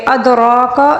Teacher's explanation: دال کے اوپر ساکن ہے، قلقلے کے ساتھ پڑھیں گے. را کو پر پڑھیں گے.